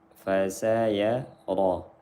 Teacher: Ra-nya dibaca tebal karena ra-nya berharokat fathah. Salah satu ra yang dibaca tebal, ra-nya berharokat fathah, baris atas.